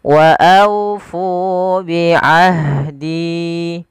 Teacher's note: aunya lembutkan sambil dimonyongkan sedikit bibir kita ke depan untuk menyempurnakan daripada huruf wawnya.